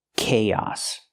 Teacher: we link the two vowels with the Y sound like yes and yesterday